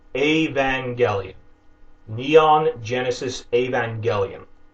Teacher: Imagine that the word Evangelion has an accent aigu over the first E, and remember it's pronounced with a hard G instead of a soft G like evangelist